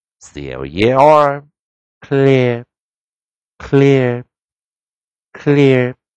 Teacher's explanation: 这是利用▁r▁control▁r▁所控制的音节来发出来的一个双元音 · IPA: ɪə